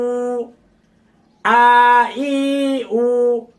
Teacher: এখন আমরা জবর পড়েছি মুখ ফাঁকা করে, জের হালকা নিচের দিকে চাপ দিয়ে পেশ শুধু ঠোঁট গোল করেছি।